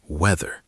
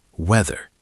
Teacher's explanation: The TH is voiced. It's like a vibrating D.